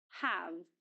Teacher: It is pronounced with the full vowel sound ah. In other words, it's pronounced in the strong form